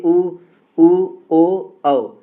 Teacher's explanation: बोलकर भी आप देखेंगे कि होठ वृत्त के समान गोल रहेगा · वृत्ताकार यानी जिसमें होठ वृत्त के समान गोल हो जाते हैं। तो वो वृत्ताकार स्वर कहलाते हैं।